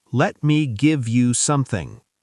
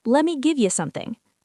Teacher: Let me becomes lemme. Give you becomes give ya.